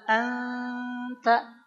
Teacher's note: pengucapannya begini ketika an itu udah begini Pak si lidah kita si ujung lidahnya udah siap-siap ngucapin ta ditambah dengan ghunah